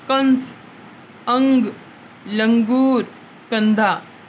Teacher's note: अनुस्वार, ये अम्म की बिंदी जो अपन कहते हैं, इसके उच्चारण में हवा केवल नाक से निकलती है।